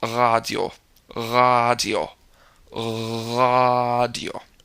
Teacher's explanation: it feels like bouncing the back of your tongue off the upper part of your throat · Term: rolled R